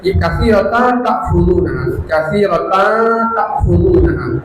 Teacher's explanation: Katsiratan ta'khuduna disamarkan lalu didengungkan ta'khuduna.